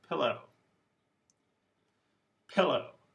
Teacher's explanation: the word stress is on the first syllable